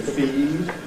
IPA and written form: fiːd̥ (feed)